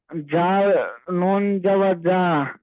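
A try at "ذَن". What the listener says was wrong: জাল, শোনেন, হয়নি। জাল নুন জাবার জান, আর আপনি পড়ছেন জাল নুন জাবার যা, জান নুন জাবার না, নুন জাবার, নুন জাবার না।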